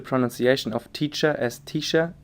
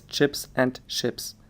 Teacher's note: affricates such as ch and sh are merged, leading to the pronunciation of teacher as tisha and to homophones such as chips and ships